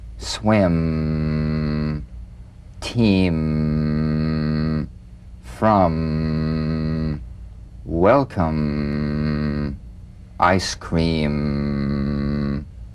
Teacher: the M is a nasal labial consonant made with the lips